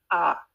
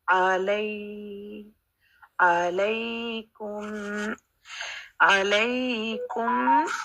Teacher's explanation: عین کا مخرج ہم نے ٹھیک کرنا ہے، گلے کے بالکل سینٹر سے